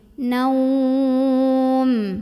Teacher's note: setelah kita moncongkan bibir, mengumpulkan bibir ke huruf waw, kita tarik lagi bibir ke belakang ke huruf mim.